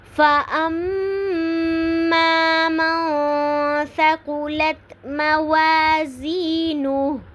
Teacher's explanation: فَأَمَّا پہ میم مشدد ہے، میم مشدد پہ غنہ ہو رہا ہے۔ مَن ثَقُلَتْ پہ نون ساکن کے بعد حروف اخفا میں سے سا آ رہا ہے، تو اس لیے یہاں پہ ہم آواز کو تھوڑی دیر کے لیے ناک میں چھپانا ہے۔